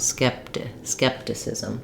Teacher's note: I just release it into the T. And so you're going to have basically somewhat of an unaspirated T here.